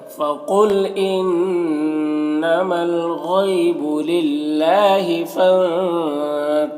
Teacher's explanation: ظا حروف مستعلیہ میں سے پر پڑھیں گے ، را کو اوپر پیش ہے را کو پر پڑھیں گے